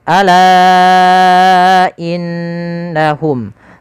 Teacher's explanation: la kita panjangkan 4 atau 5 harakat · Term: mad jaiz munfasil